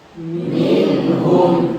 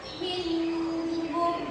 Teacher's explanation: Nunnya mati bertemu dengan salah satu huruf izhar yaitu H. Ha. Jadi bacaannya harus jelas.